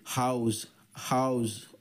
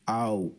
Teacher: హౌస్ ఓ యు రెండు కలిసి ఆవ్. ఆ ఊ అనే రెండు అచ్చు శబ్దాలు ఇక్కడ మనకి దీనిలో వచ్చాయి